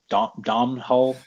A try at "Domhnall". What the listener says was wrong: You know, I actually met someone Irish pretty recently, and they told me his name is actually pronounced like Donald, like the word, like the name Donald, but it's just like you don't say the M, it's like Donald.